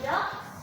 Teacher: It's because in dogs, the letter G is voice, is a voice consonant. So the suffix S become a voice.